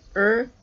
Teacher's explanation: So pretty much what you would expect intuitively as an English speaker from the spelling, which is nice. The broad R is pretty much just like the R you use in Australian English, except that you've got to pronounce it at the end of the word, so R. And the double R is more like the trilled or rolled R that you might hear from a Scottish English speaker.